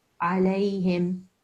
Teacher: It's not the hard ha. You were pronouncing the thick ha. There's no need because this is the soft ha.